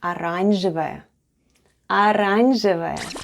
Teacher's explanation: Let's spell the word оранжевая. The first letter is O, and it's unstressed and is pronounced as A. Then goes R, A, N, Ž, E, V, A, and Ya at the end.